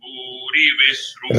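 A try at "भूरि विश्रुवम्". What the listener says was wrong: Re anudata. La bhore. Re வந்து short hrasvam. தீர்க்கமா படாதுங்க. ஸ்வரம் கரெக்டா வந்தது, but you made it தீர்க்கம்.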